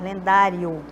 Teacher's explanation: a gente nem ouve direitinho o som do O, né? Então, é um ditongo. Tem que ficar juntinho aí.